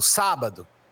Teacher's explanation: A sílaba tônica, ela tá na antipenúltima posição da palavra. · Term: proparoxítona